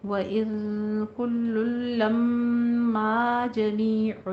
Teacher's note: کل لما میں ادغام بلا غنہ یعنی ادغام تام کر دیں گے، لم پہلے لم میں غنہ واجبہ، پھر ما میں الف مد ادا کریں گے، ٹھیک ہے۔ · دئی میں یا لین اور نا میں الف مدہ